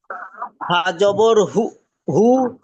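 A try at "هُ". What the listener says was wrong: জবর হু নয়, হা পেশ হু।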